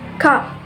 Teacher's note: The tongue is low and the central part is raised. The lips are unrounded. Ah. For example, the word cup.